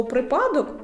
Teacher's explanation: в слові випадок наголос на першому складі